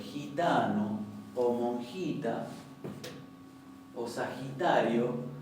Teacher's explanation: si tenemos en palabras como por ejemplo gitanos o monjitas sagitario pronunciamos una jota más adelantada en el paladar que se parece casi un poquito es como un intermedio entre